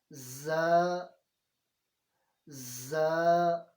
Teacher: ان کو جب بھی پڑھنا ہے تو آواز سیٹی کی طرح آنی چاہیے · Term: سیٹی والے حروف